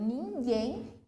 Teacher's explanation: esse guem, obviamente, é a sílaba mais forte · Continuando, então, oxítonas terminada em e ens, isso a gente já viu na aula passada ali, essa regrinha, que é a questão de ter o acento agudo nas palavras que terminam em e ens, só que esse acento agudo, ele não tem essa tonicidade, né, esse timbre aberto, ele mantém o timbre fechado